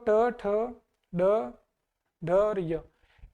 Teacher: ये दांतों के जस्ट ऊपर वाले हिस्से पर अपनी जीभ टकराती है।